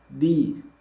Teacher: Huruf dal karena memiliki sifat syiddah, maka tidak mengalir bunyi hurufnya.